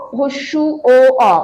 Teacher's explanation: দেখতে পাবে ঠোঁটটা কুঞ্চিত হয়ে যাচ্ছে, কুঁচকে যাচ্ছে, তাই এই 3টাকে আমরা বলবো হচ্ছে কুঞ্চিত স্বরধ্বনি।